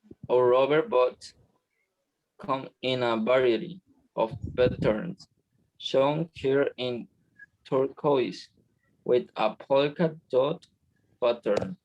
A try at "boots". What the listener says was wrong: This remember is boots, not bots. Boots, and this is variety.